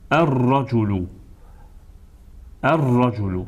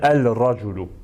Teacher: Amma burada isə əl artiklında deməli eyni məxrəc olduğuna görə ləm hərfi oxunmur və onun əvəzinə deməli şəmsi hərf təkrarlanır və oxunur